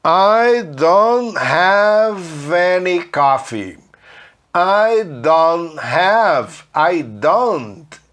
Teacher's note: Não fala esse T na maioria das vezes, tá?